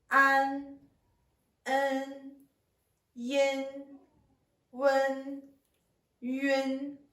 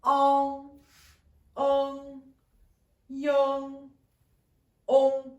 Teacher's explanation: Quand on prononce voyelle prénasale, la forme de la bouche est plus petite que quand on prononce voyelle nasale postérieure. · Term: voyelles prénasales